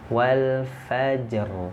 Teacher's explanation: ro-nya mati sebelumnya ada huruf Jim yang sukun sebelumnya ada harakat fathah Fanya maka dia dibaca tebal gitu ya walfajr lalu jimalatunr Jadi ini baca tobal baik seperti